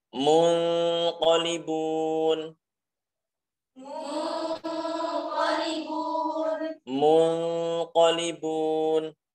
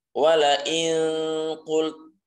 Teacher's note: Kita menyamarkan nunnya dan tidak menjadikan bacaannya itu menjadi eng, bukan.